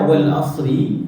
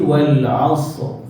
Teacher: bila kita dah bariskan ra tu baris bawah, dia jadi nipis